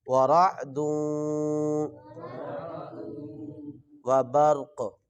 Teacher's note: را کو موٹا کریں گے اور اس کے بعد قاف کو بھی موٹا کریں گے